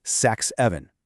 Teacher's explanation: When you say 67 really really fast, the S at the end of six and the S at the beginning of seven, they just kind of melt into one sound. That leaves the rest of the word seven sounding exactly like the name Evan. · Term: degemination